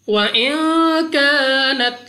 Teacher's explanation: नून साकिन के बाद कॉफ इख्फा का कायदा गुन्ना करके पढ़ेंगे। उसके बाद अलिफ से पहले जबर अलिफ मद्दा 2 सेकंड तक लंबा करना है।